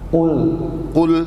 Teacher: qafnya dari awal langsung tebal dulu. Jadi rahang kita sudah siap ke tebal. Qul Ini langsung o.